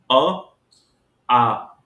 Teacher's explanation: कंठ पर। मुख का और कोई भाग सक्रिय नहीं है अ और आ बोलते समय, लेकिन कंठ अधिक सक्रिय है, इसलिए इसका उच्चारण स्थान कंठ होता है।